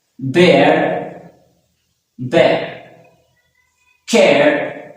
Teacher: The first sound, that is known as A sound, and the next is schwa sound. So A sound and schwa sound. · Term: air sound